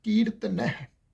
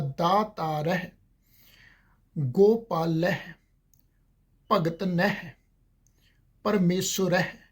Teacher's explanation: ਹਹ ਅੱਖਰ ਜਿਹੜਾ ਮੁਕਤ ਹੈ ਉਹ ਆਪਣੇ ਤੋਂ ਪਹਿਲੇ ਅੱਖਰ ਦੇ ਉੱਪਰ ਦੁਲਾਵਾਂ ਦੇ ਟੋਨ ਵਿੱਚ ਉਹ ਉੱਲਰ ਕੇ ਉਚਾਰਨ ਹੋ ਰਿਹਾ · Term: ਸੰਪਰਦਾਈ ਉਚਾਰਨ